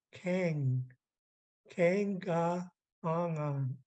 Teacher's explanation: underline K comes from the very back and you close off the air flow